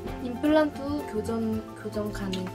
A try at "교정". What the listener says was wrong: 발음 좀 잘 안 되네, 그치? 교전? 싸우자는 거야?